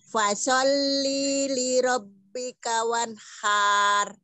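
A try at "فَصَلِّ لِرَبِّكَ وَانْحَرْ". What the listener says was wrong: Iya, bukan tebelnya, tapi kepanjangan. Satu. Wanhar, enggak ada yang panjang. Nah, linya jangan dipanjangin itu, langsung aja fasalli li rabbika. Fasalli li rabbika.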